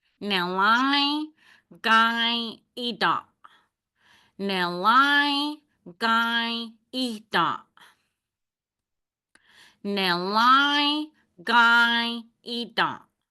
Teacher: I'm really nasalizing those words because of this little squiggly line underneath it.